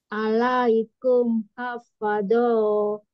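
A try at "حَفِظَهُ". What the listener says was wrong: Pendek.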